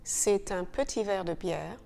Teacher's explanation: T is now sounded and no longer silent. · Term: liaison